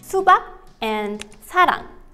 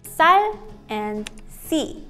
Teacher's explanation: you need to make the S sound stronger. You can do this by pushing more air out of your mouth when you say it. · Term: 쌍시옷